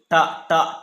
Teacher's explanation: ట ట ట అన్నది ఇప్పుడు మనకి ఇక్కడ మూర్ధన్యంలో పైన పలుకుతుంది